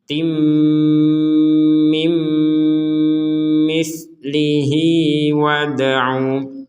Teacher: tanwin kasrotain bertemu mim, ya, dimasukkan, kemudian dengung.